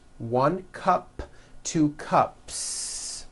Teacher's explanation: unvoiced so for example you have one cup or two cups there's no voicing at the end of that word the S remains unvoiced